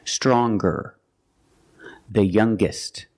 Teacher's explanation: When we change these adjectives with er or with est, we're going to pronounce the g sound, the hard g.